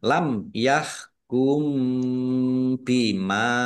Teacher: Mim sukun bertemu dengan huruf ya. Bacaan idhar safawi dibaca jelas.